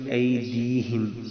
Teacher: دال کو تھوڑا سا لمبا کریں گے تاکہ یا بیچ میں آ جائے. اکثر ہم پڑھتے ہیں ایدیہم تو یا بیچ میں سے کٹ جاتی ہے.